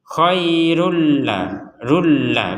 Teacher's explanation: kalau tanwin bertemu lam maka nanti dimasukkan nih tanwinnya kepada huruf lam